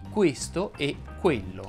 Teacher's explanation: la E è una anteriore medio alta. Stiamo parlando della E di questo e quello. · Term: E chiusa